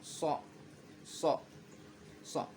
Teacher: So ini hampir makhraj keluarnya hampir sama dengan sa, cuman lidah sedikit ke kanan. So, so, so, lidah sedikit ke kanan.